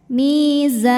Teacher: Mad tabi'inya alif didahului fathah, huruf yang disukunkannya nun, maka zainya panjang, boleh 2, boleh 4 atau 6 harokat asal konsisten dalam 1 kali baca. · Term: mad arid li sukun